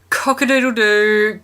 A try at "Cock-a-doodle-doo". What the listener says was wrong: Just slow it down a little bit. and just want to hit each syllable. You're missing the doodle. The cock was great.